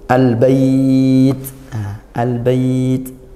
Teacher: lam sukun bertemu ba nah makhrajnya beda kalau BA di bibir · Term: izhar qamariah